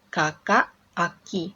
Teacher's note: terjadi fronting atau perubahan bunyi k, velar, menjadi bunyi yang lebih mudah diucapkan. Ada juga reduksi suku kata, dari 2 suku kata menjadi pola bunyi yang lebih sederhana.